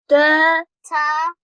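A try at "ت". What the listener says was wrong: Don't say tha. you don't say tha. Okay. Tha not. Say ta.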